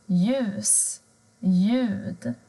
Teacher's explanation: Men har du L och J tillsammans så försvinner L-et. Du hör inte det, utan det blir ljus, ljud.